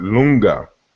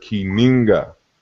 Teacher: in Kikongo, the L sound, you know, also interchanges with N. So they have the word lunga, which means balance, and they also have this word kininga, balance.